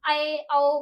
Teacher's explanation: और यह हमारा होता है एक इनकी इसकी संख्या होती है एक विवृत और अर्ध विवृत विवृत होता है बड़ा अर्ध विवृत इससे थोड़ा सा आधा मतलब खुलेगा इसमें पूरा खुलेगा अर्ध विवृत में इसमें थोड़ा सा आधा खुलेगा